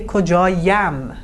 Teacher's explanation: Two vowels next to each other. It's hard to pronounce. So we put a euphonic ye here. This intervenes here.